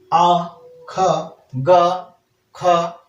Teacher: कंठ के उच्चारण के लिए आप आ, ख, ग, ख, ठीक है, घ और हा उच्चारण कीजिएगा तो कंठ से आवाज निकल के आती है